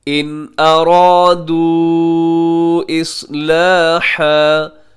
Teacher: ارادو کے آخر میں واو مدہ ہے، اور واو مدہ کے بعد حمزہ اگلے لفظ کے شروع میں آ رہا ہے، یہاں بھی ہم مد کریں گے، اور اس مد کو کہا جاتا ہے مد منفصل.